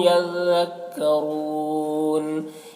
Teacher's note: یذکرون را کو حروف مستعلیہ میں سے ہے اور یہاں پر وقف کی صورت میں نون کا زبر سکون سے بدل جائے گا تو مد عارض وقفی ہوگا